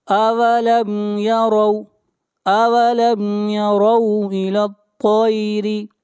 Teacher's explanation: طا کو موٹا پڑھیں گے، طا حروف مستعلیہ میں سے ہے